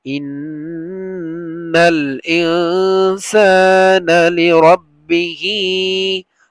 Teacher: ইন্না নুনের উপরে তাসদিদ ওয়াজিব গুন্না, আর ইনসানা নুন সাকিনের পরে সিন আসছে ইখফা গুন্না, গুন্না হবে